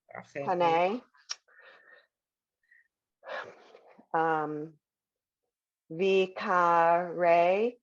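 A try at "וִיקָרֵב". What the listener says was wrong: Ends in a V.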